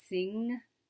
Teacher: at the back of the mouth, the ng sound, as in the ending sound of sing